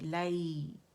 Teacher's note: लाई क्या है, लिया लीन है हमारे पास, नरमी से अदा होगा, यानी फतह के लिए आवाज़ काउंट के लिए ऊपर जाएगी और या साकिन पे नरमी से होंगी